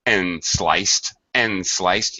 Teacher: So we're going to connect the D and the S sound together, and sliced, and actually we reduce and to N